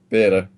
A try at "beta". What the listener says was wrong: I'm not seeing an A in between that B and T. Or an I.